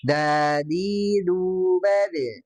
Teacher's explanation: Dan kalau untuk sifatnya memang huruf dal ini banyak ya, bisa dari segi nafas, dia punya sifat jahar, tidak keluar udara, ya, tidak keluar angin. Kalau dari segi suara dia hidah, ya, tertahan suaranya.